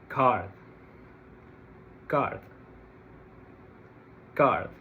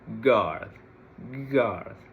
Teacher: Then guard, g, g, g. In order to pronounce the g sound, I need to produce vibration in my vocal cords.